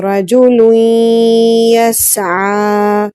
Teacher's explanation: لام کو یا سے ملا کر پڑھیں گے اور اس میں غنہ بھی ہوگا